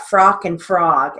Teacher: it's spelled with an O, but it has an ah sound